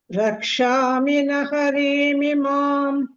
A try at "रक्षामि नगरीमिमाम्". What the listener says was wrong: when we say naga, try saying the g instead of h.